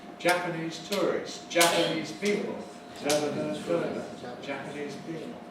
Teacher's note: When we've got another word following with a strong stress, then we suppress the second of these two. And so you hear Jap as the only stress. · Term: stress shift